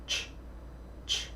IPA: tʃ